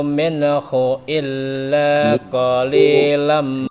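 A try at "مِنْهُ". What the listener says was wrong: Minhu, bukan minnahu, minhu.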